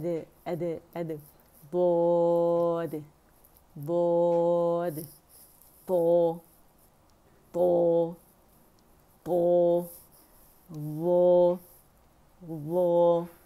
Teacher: آواز موٹی ہونی چاہیے، اطباق ہے اس کے اندر، زبان لپٹتی ہے تالو کے ساتھ، ہونٹ نہیں اٹھیں گے